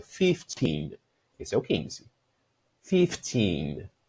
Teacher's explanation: No 15, eu vou colocar a força no final da palavra e vou realmente alongar essa pronúncia.